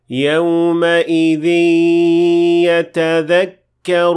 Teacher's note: we merged the noon of the tanween with the ya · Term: merged noon